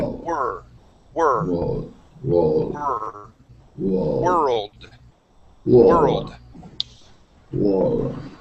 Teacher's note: instead of focusing on that o we're going to make an er sound